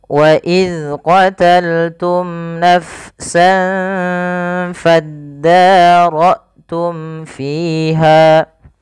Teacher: fi dan ha harus dipanjangkan sama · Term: mad tabi'i